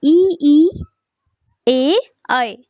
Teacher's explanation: उच्चारण में होठों की आकृति अवृत्ताकार होती है